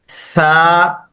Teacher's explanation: Three dot letter की family से है। जबान की नोक सामने दांतों के किनारों के साथ लगती है।